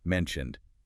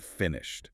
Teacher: the ed on mentioned sounds like a d, but on finished it sounds like a t